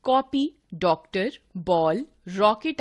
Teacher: ना तो आ ध्वनि है और ना ओ बल्कि इनके बीच की ध्वनि है। इस आगत ध्वनि के लिए हमने अ वर्ण बना लिया है जिसकी मात्रा है। · कॉपी, डॉक्टर, बॉल, रॉकेट आदि में न तो आ ध्वनि है और न ओ, बल्कि इनके बीच की ध्वनि है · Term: औ ध्वनि